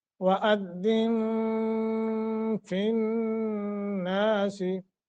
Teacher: नून मुशद्दत है, गुन्ना करके पढ़ेंगे